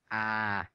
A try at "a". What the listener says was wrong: Ah. Not aw. Ah. Ah.